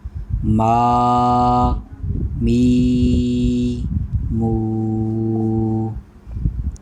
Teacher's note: اس کو ادا کرنے کا طریقہ دونوں ہونٹوں کے خشک حصے سے یہ ادا ہوگا